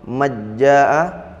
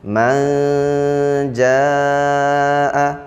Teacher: pertengahan antara idhar dan idgham disertai dengan gunnah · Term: ikhfa hakiki